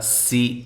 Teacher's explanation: سین کو باریک سیٹی کے ساتھ